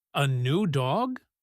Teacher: You just say, "A new dog?" with your voice jumping up high. By just echoing the words with a rising pitch, you are telling your friend that you are surprised and you want them to tell you more.